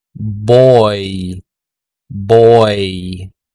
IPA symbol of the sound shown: oy